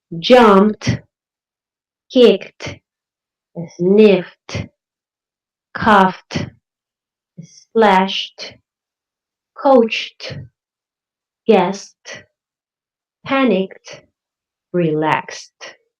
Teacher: If you use one of these voiceless consonants at the end of the ed word, the ed sounds, it's going to sound like a T.